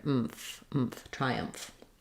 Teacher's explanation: the mph is just basically closing the lips and then keeping the lip and teeth together